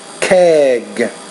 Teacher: the vowel before it is longer because the G is a voiced consonant